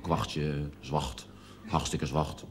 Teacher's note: een aantal medeklinkers die merkwaardig worden uitgesproken, zoals de R die als een G wordt uitgesproken, kwachtje, zwacht, hartstikke zwacht. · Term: plat Haags